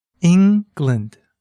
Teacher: Can you hear where the stress is? It's on the first syllable.